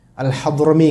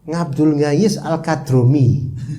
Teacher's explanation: hadromi jadi kadromi Jawanya itu benar-benar Kentel